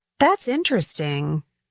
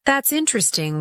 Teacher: That's interesting with rising intonation shows genuine curiosity. That's interesting with flat intonation suggests skepticism or polite disinterest.